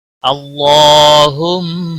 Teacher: اللہ کے لام کو موٹا پڑھیں گے، اس کے اوپر کھڑی زبر ہے، ایک الف کے برابر کھینچ کر پڑھیں گے۔